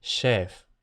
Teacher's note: la apertura de esa E cerrada en sílaba cerrada que pasa a chef.